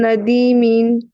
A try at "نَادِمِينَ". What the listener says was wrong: ندیمین نہیں, نون پہ کھڑا زبر ہے. نادیمین.